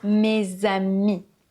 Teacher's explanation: Le S de mes se transforme en son Z puisqu'il y a une voyelle, le A derrière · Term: liaisons